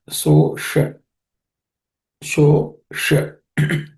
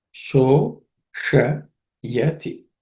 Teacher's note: This sh is cerebral sh.